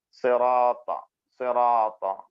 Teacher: സ്വാദും റാവും ത മൂന്നും തഫ്ഖീമായിട്ട് ഒന്ന് ബോൾഡായിട്ട് പറയേണ്ട അക്ഷരങ്ങളാണ്.